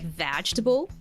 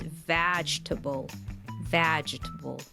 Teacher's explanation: this word has like four syllables but it's just pronounced with three